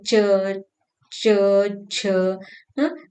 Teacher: हमारी तालु और जीवा के जीवाग्र से जीवा यानी जीभ के अग्र भाग से निकलने वाली ये ध्वनि है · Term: च वर्ग